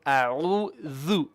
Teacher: Make your ayn a bit more in the middle throat.